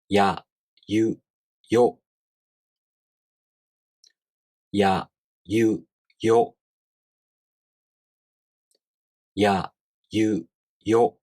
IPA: j